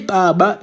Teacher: the B that we use the bilabial implosive sound